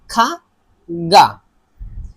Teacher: গা এবং খা সাউন্ড এটা আমাদের কণ্ঠনালী থেকে আসবে, মানে যখন বেরোবে এইটা কোথাও বাঁধবে না, সরাসরি বেরোবে খা গা, এটা সরাসরি গলার ভিতর থেকে আসবে।